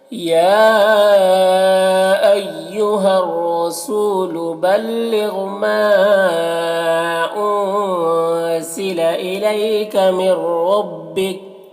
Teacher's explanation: من ربک یہاں پر نون ساکن کے بعد را ہے تو ادغام تام ہوگا، نون کو را سے ملا کر بغیر غنہ کے پڑھیں گے اور را کو پر پڑھیں گے اور یہاں پر وقف کریں گے تو کاف کا زبر سکون سے بدل جائے گا، تو اس طرح سے پڑھیں گے۔